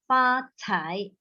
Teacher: Your 财, the C, your air is not enough yet.